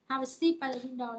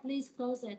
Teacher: thì câu mệnh lệnh thì mình cũng là xuống giọng